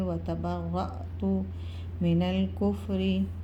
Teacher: اور یہاں پر حمزہ کے اوپر دیکھیں جزم ہے، الف کے اوپر جزم ہے، تو یہ الف نہیں کہلائے گی، یہ حمزہ ہے، تو یہاں پر ہم جو ہے حمزہ کو جھٹکا دیں گے